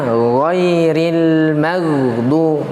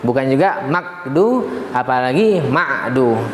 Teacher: Gha punya sifat ya rakhwah, dialirkan dia ya dengan ringan.